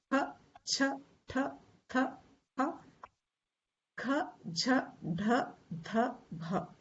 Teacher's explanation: So our Mahapran means extra breath.